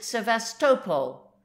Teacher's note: the Russians pronounce it sevestopol with the accent on the third syllable